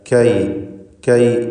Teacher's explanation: കാഫ് എന്ന അക്ഷരം ഇസ്തിഫാലിൻ്റെ ഹർഫാണ്. അതോടൊപ്പം തന്നെ അതിന് ഷിദ്ദ, ഹംസ് തുടങ്ങിയ സിഫത്തുകൾ ഉള്ളതാണ്. അപ്പോൾ കൈ കൈ എന്ന് കായ് കായ് എന്ന് ഒരു ഹെവിയാക്കിക്കൊണ്ട് പറയുന്ന അവസ്ഥ വരരുത്. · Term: ഇസ്തിഫാലിൻ്റെ ഹർഫുകളിൽ പെട്ടതാണ് കാഫ്